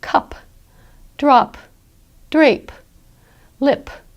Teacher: listeners want to hear that puff of sound that you make, that breath that you make at the end with a P. We want to hear that because that's what tells us that you're saying a P instead of a B, for example, or a D or something else.